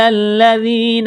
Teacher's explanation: لام کو لام کے ساتھ پلس کریں گے، لام کو دبائیں گے